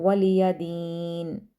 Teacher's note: اور اینڈ پہ نون کو سائلنٹ کر دیں گے